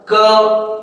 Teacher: पीछे अ की ध्वनि आ रही है